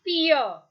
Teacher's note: e and uh two sounds are there which come continuously